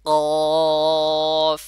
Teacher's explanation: যেমন আমি বলতেছি অফ, দেখেন বলার পরে এবং ওই যে সামনের যে দুইটা আপনার দাঁত আছে উপরে, ওই দাঁতটা এসে আবার আপনার ঠোঁটের সাথে লাগবে